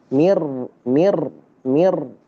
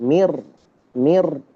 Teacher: Kalau enggak ditikrar ada orang baca ini salah. itu karena salah karena tidak ditikrar, tidak digetar. Dia harus ada getarnya. Mir, mir ada getarnya.